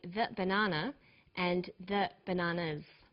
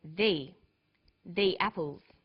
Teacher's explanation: when the comes before a vowel sound we say thee